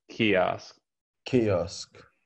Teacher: the first syllable is stressed